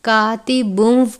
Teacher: کاتبون، لفظ ہے کاتبن، باریک کاف ہے، الف سے پہلے زبر ہے الف مدہ، تنوین کے بعد واو مشدد ہے، واو مشدد حروف یرملون میں سے ہے، ادغام کا قاعدہ لگتا ہے، یعنی تنوین کو واو مشدد سے ملا کر غنہ کر کے پڑھیں گے۔ کاتبن نہیں پڑھنا بلکہ کاتبون پڑھنا ہے، واو کی آواز کے ساتھ پڑھیں گے۔